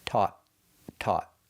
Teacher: We're using the aw sound, like ball and call, and we finish with a stop t.